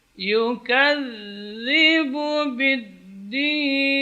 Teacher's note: za, yang bertasydid di sini yang mengalir adalah suara, bukan udara